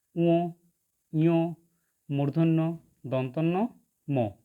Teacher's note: বর্গের পঞ্চম বর্ণগুলি উচ্চারণের সময়, অর্থাৎ পঞ্চম বর্ণগুলি হল উ, ইয়, মূর্ধন্য, দন্তন্য, ম। এই বর্ণগুলি উচ্চারণের সময় শ্বাসবায়ু মুখবিবরের কোনো স্থানে বাধাপ্রাপ্ত হয়ে নাসিকা গহ্বরে প্রবেশ করে এবং অনুনাসিক অনুরণন তুলে উচ্চারিত হয়, তাই এই বর্ণগুলিকে নাসিক্য বর্ণ বলে।